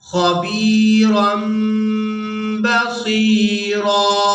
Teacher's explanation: تنوین میں جو نون کی آواز ہوتی ہے اس کو میم کے ساتھ بدل دیتے ہیں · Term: اقلاب